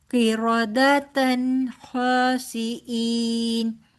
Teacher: دو زبر کی تنوین کے آگے خا آ رہا ہے تو یہاں پر تنوین کا اظہار ہوگا